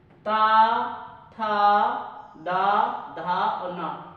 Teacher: जब आप ता को बोलेंगे तब क्या होगा, आपकी जो जीभ है वो दांतों से टच होगी, इसीलिए इन्हें दंत व्यंजन के नाम से जानते हैं।